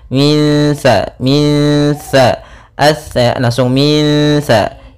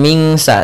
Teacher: cara membacanya kita samarkan langsung ke huruf sa-nya.